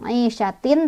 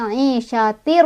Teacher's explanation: Cara bacanya tanwinnya langsung masuk ke ro. Jadi bukan aisyatin tapi aisyatir, ro langsung masuk.